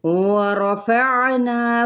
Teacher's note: वाव होंठों की ना तमाम गुलाई के साथ, रॉ के ऊपर फतहा है तो पुर पढ़ा जाएगा।